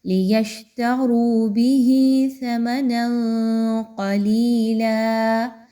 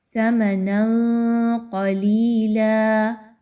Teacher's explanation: نون کے اوپر دو زبر کی تنوین آ گئی تو آپ نے یہاں پر نون کی آواز کو تھوڑا سا مخفی کرنا ہے، چھپانا ہے۔ ثَمَنًا قَلِيلًا، اور پھر قاف کو اچھے سے موٹا کر کے ادائیگی رکھنی ہے۔